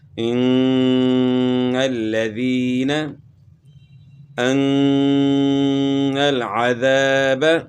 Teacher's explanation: یہاں نون مشدد میں غنہ کرنا ہے، اور آگے الف مدہ ہے، الف سے پہلے زبر ہے تو الف مدہ کا بھی ساتھ خیال کرنا ہے۔